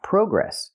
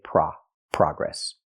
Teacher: in America we use the open a sound like hot and stop